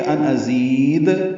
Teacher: وقفاً یہ ان ازید دال پہ قلقلہ ہوگا